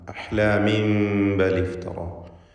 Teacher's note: ഇവിടെ തൻവീനിനെ മീമാക്കി മാറ്റി ഇഖ്ലാബ് ചെയ്ത് ഉച്ചരിക്കണം. ഫലത്തിൽ ഇഖ്ഫാ ഷഫവി എന്ന സാക്കിനത്തായ മീമിന് ബായിന് മുമ്പിൽ വരുമ്പോൾ നൽകുന്ന ഹുക്മാണ് ഇവിടെയും നൽകപ്പെടുക.